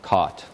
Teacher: your tongue goes back it lowers a little bit the lips aren't rounded in this case